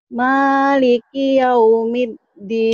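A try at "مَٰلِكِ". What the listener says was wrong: Ki-nya jangan panjang. Maliki itu sebenarnya nggak panjang, cuman sepertinya tadi bacanya agak kagok, agak ragu. Maliki yaumiddin.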